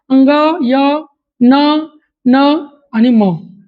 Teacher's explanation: नाकातून आणि मुखातून ज्या वर्णाचा उच्चार होतो त्याला अनुनासिक म्हणतात